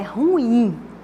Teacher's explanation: é uma oxítona, porque a sílaba tônica está na última